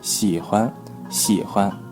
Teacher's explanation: Here you can have the first tone or neutral tone.